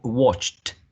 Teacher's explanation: final consonant sound ch, which is a voiceless sound, and then we have to add a voiceless t, so we say watched.